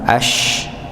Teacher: huruf shin pada kata al-ashqa maka dibaca suara khasnya ya, atau sifat khasnya yaitu tafasyi nggih, maka ash bukan as tapi ash.